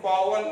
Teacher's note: ऐसे वकार उच्चारण करने के लिए हम दंत और ओष्ठ ये दोनों स्थान का मिलावट से वकार निकलता है।